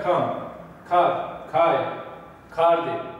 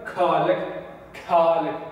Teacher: Yani biraz uzatılıp söyleniyor. H ve K sesi karışıyor birbirine. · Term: KH sesi